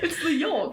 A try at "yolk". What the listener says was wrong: Yeah, but why do you like overpronounce the K? Yolk. Yolk.